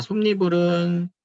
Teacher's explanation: 솜니불이라고 하는 니은 첨가가 일어나네요.